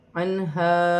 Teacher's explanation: نون ساکن میں غنہ نہیں کیا جائے گا کیونکہ آگے ہا حروف حلقی میں سے ہے